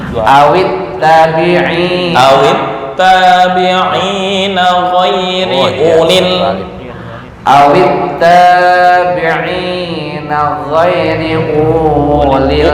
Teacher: Jadi dibaca pendek seolah-olah wawunya nggak ada.